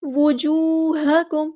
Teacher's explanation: پڑھنا، ٹھیک ہے، واؤ کے اوپر پیش ہے، وجو، ٹھیک ہے، واؤ اور جیم دونوں پر پیش ہے تو ہونٹوں کو گول رکھیں، راؤنڈ رکھیں